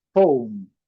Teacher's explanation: E destacando esse O com um pouquinho de U aqui, a letra E não pronunciada.